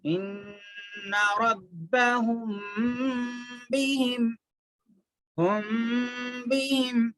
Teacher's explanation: میم ساکن کے بعد با آتا، تو یہاں پر کیا کرنا، میم کی آواز کو تھوڑا سا چھپا کے با میں ملا کے پڑھتے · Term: اخفاء شفوی